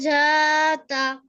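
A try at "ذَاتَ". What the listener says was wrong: ঝাতা না, ওটা জাল, জাতা।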